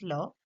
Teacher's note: the sound manages to flow out freely over the side of the tongue in spite of the closure formed by the tongue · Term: lateral sounds